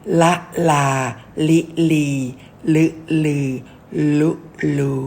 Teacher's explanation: ตัวลิงลิ้นอยู่หลังฟันบน